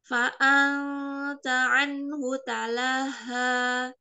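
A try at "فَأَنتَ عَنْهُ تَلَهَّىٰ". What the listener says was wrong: Tahan sedikit lagi pada hak tasydid.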